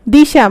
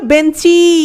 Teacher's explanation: থেকে কি হয়ে গেল দিশা মানে শেষে একটা স্বরের কি ঘটেছে শব্দের শেষে একটা স্বরের আগমন ঘটেছে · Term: অন্তঃস্বরাগম